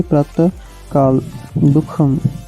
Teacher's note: विसर्ग का भेद जीवामूल्य, जब विसर्ग के बाद क ख वर्ण रहते हैं तब अर्ध विसर्ग उच्चारण होता है।